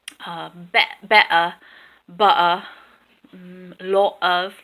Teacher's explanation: I'm not sure that Cockney speakers use a T sound in the middle or end of a word ever. So you have more of a better, butter, lot of, things like that.